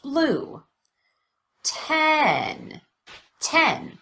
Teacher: the vowel is louder and longer and there's an obvious change in Pitch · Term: primary stress